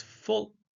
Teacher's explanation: the L is a dark l pronounced with the back of the tongue raised